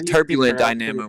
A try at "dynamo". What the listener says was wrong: You're putting the wrong emphasis on the wrong syllable.